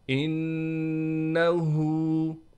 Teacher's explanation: ما شاء اللہ، آخر میں ہا کو بھی صاف کر کے ادا کرنا ہے۔ انہو، نون پر غنہ کیا جائے گا، ہا پر الٹا پیش ہونے کی وجہ سے ہا کو 1 الف کی مقدار کھینچیں گے۔